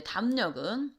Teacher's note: 미음 때문에 리을이 니은으로 바뀐다. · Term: 비음화